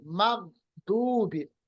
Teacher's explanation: इस पे रिबाउंड नहीं होता, कलकला नहीं होता गैन